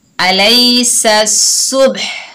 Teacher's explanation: हा की जो साउंड है वो जाहिर होनी चाहिए वक्फ की हालत में।